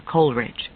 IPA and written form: ˈkoʊlrɪdʒ (Coleridge)